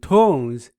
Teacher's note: tones is a falling tone, which is fourth tone